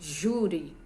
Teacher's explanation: Palavra paroxítona terminada em I são acentuadas. Júri é uma palavra paroxítona porque a sílaba tônica dela é Ju. Terminada em I são acentuadas.